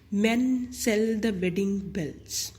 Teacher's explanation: द same vowel sound of द short vowel ई repeats itself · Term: शॉर्ट ई